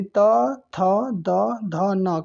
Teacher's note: यानी दंत से इसका उच्चारण स्थान होता है। यानी त, थ, द, ध, न को हम लोग दंतीय कहते हैं।